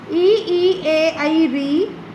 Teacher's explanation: इन्हें बोलने में हमारे जीभ का आगे का भाग प्रभावित होता है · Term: अग्र स्वर